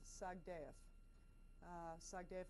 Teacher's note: Well, his name is Roald Sagdaev, Sagdeev, of course, in Russian, you always put the syllable in the middle, the accent on the middle syllable